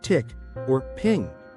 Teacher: The I sound in tick or ping is a high front vowel. Your mouth is nearly closed when you say it.